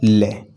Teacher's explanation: जिसका उच्चारण करने पर जिह्वा मुख्य मार्ग में बीच में खड़ी हो जाती है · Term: पार्श्विक व्यंजन